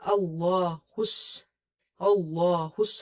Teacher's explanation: Ha is from the lower part of your throat. It's from halkia letters, throat letters, but it's from the lower part of the throat.